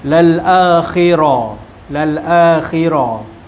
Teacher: ra berbaris di atas, ra dibaca dengan tebal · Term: ra tebal